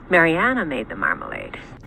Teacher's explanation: she descends to the bottom end of her pitch range, and she just kind of stays there in creak throughout the whole thing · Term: creek